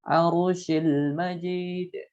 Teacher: ra-nya tafkhim dibacanya karena sukun sebelumnya fathah